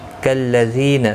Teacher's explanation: زی یا مدہ ہے، 1 الف کی مقدار کے برابر کھینچ کر پڑھیں گے